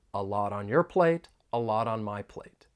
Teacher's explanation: I'm going to pronounce it as a flap T, and then we can link it with the vowel sound in on.